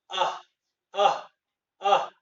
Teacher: और विसर्ग आह, आह, आह। ह आता है लेकिन पूरा नहीं आता है।